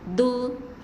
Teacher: hujung lidah tu macam terpantul sikit di bahagian gigi kapak ataupun gigi atas kita.